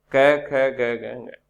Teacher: वर्णों का उच्चारण स्थान कंठ है